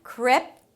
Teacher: And the close it with a P and a T "krip-tow". The T opens up to the 'oh' as in 'go'.